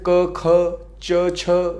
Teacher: वर्णों के उच्चारण में स्वर तंत्रियों में कंपन नहीं होती है उन्हें अघोष कहते हैं